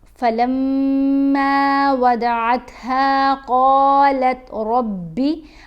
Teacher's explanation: ٹھیک ہے، یہاں ہم نے غنہ کیا، قوف کو، را کو، ضاد کو ہم نے پر پڑھنا ہے، موٹا پڑھنا ہے